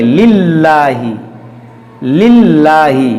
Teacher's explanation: لام پہ زیر ہے تو اس کو باریک کریں گے